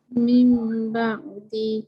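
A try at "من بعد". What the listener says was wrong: Tarik panjang sikit untuk dengar. Mim ba'di. Okay, jangan kedekut dengung.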